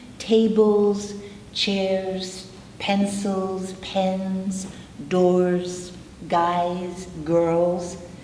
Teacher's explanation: So if we trace the vibration rule for plural nouns and look around the room, tables, chairs, pencils, pens, doors, guys, girls, because those words end in a vibrating sound, the S will also vibrate. We're merely keeping the vibration going, okay?